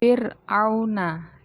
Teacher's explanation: ro sukun ini dibaca targik atau tipis